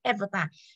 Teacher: khi đọc thì trọng âm nó sẽ rơi vào âm tiết đầu